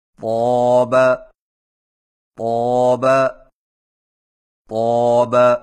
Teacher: طا کی ادائیگی میں زبان کی نوک کو سامنے والے اوپر کے 2 دانتوں کی جڑ سے لگا کر اور زبان کے پچھلے حصے کو اوپر کی طرف بلند کرتے ہوئے موٹی آواز میں پڑھیں